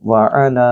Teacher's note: آئین کو گلے سے بولیے اور لام کے اوپر مد ہے، اس کو آپ 2 سے 3 سیکنڈ کے لیے لمبا کریں گے